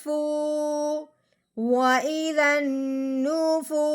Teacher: واؤ ساکن سے پہلے پیش آ جائے تو اسے ایک الف کے برابر لمبا کیا جاتا ہے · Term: مد